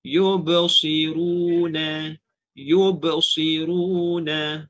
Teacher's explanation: kan ada dengar qalqalah kan, tapi dia macam tak berapa kuat sangat begitu.